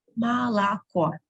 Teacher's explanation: Молоко, three letters O. Молоко, only the last letter O is stressed. That's why the first two I pronounce as A.